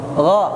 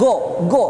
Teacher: Gha. Dia di tenggorokan ya. Kalau go, itu di atas tenggorokan dia.